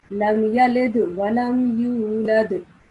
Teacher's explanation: try to produce a slight jerking sound at the dal. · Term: Qalqala